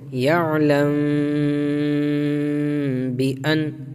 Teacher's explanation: اندر ہے اخفاء شفوی کیونکہ میم ساکن کے بعد با ہے، میم ساکن کے بعد جب با آتا ہے تو اخفا کرتے ہیں وہاں پر غنہ کے ساتھ